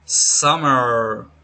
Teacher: Let's start with This is a voice sound we are used with our vocal cords. It's bilabial, which means we use both lips are closed. · It's bilabial, which means we use both lips are closed. It's a nasal because the air escapes within your nose. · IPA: /m/